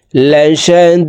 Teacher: দি 3 আলিফ টেনে দালকে সাকিন করতে হবে, কারণ মদের হরফের বামের হরফে ওয়াকফ হইলে মধ্যে আরজি 3 আলিফ টেনিয়া পড়িতে হয়।